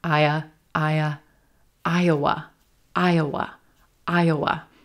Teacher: Very quick schwa in that second syllable.